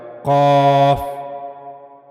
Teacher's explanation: قاف بھی پر پڑھے جانے والے حروف میں سے ہے، لہذا اس کو جب بھی پڑھا جائے گا اس کو آواز کو موٹا کر کے یعنی پر پڑھا جائے گا